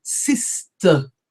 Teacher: Any word ending in ER, we don't roll our R's.